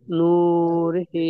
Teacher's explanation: হায়ের নিচে খাড়া জের এসেছে, এটি ইয়া মাদ্দা, ও মাদ্দার সমতুল্য, সুতরাং একে সর্বদা একালিক পরিমাণ টান দিয়ে পড়তে হয়